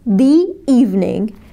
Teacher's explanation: طيب E vowel E تانية vowel هنضيف Y صوت ي أو صوت Y خفيف بين الكلمتين